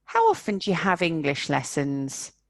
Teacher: the verbs be and do are squashed in between the important information.